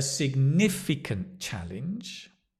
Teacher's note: The accent is on the ni